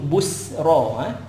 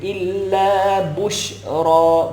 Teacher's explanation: Busyra tu kita panggil sifat tafashi, bunyi bush.